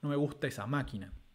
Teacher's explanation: la palabra máquina tiene el acento en la sílaba más y al ser la última palabra con acento léxico dentro de esta oración el acento nuclear va a caer sobre la sílaba ma